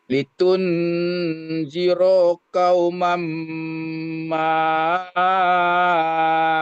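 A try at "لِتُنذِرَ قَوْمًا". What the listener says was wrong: Nah, diulang. Litunzira qauman. Roh yang pertama dibaca pendek. Litunzira qauman.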